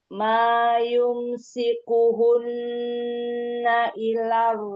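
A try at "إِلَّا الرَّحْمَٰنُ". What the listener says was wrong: Ayo, lamnya ada tasydid. Illar.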